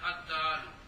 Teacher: پھر لام تعریف کو دال کی جنس کیا، پھر لام کی دال کی جنس نہیں، دال کیا کہ یہ دال آپ ہی جنس ہے کہ کوئی اور جنس تو نہیں نا. لام کو دال کیا، دال کیا، پھر دال کا دال میں ادغام کیا تو پھر بن گیا الدال.